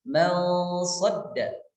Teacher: maka dibaca gunnahnya itu gunnah yang tafkhim, tafkhimul gunnah. Misalnya mal sadda, nun sukun bertemu dengan shad.